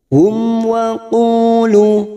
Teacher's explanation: Mim sukun bertemu waw idhar safawi, kita baca jelas tanpa mendengung. Hum wa qulu, qulu masing-masing 2 harokat mad tabi'i, duma bertemu waw sukun, duma bertemu waw sukun.